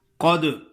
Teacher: قاف موٹا پڑھیں گے، دال پہ قلقلہ ادا کریں گے